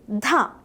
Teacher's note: This sound is produced exactly like the letter Ta but with an extra puff of air.